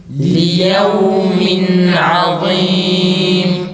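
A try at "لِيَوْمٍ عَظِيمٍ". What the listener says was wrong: Allah peltek çıksın aynı zamanda. Sadece kalın değil.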